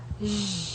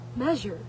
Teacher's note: It is produced by creating a narrow passage of air near the post alveolar area that produced friction. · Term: post alveolar fricative